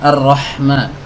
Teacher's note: huruf Ha ini kan keluar dari tenggorokan bagian tengah ya harus dikeluarkan dari sana